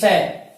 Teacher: और तीसरा है दंती श। इसका उच्चारण स्थान दंत है, अर्थात जीभ दांत से टकराती है, इसलिए इसका नाम हो गया है दंती श